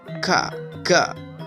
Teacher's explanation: rasakan suara itu ada pada pangkal lidah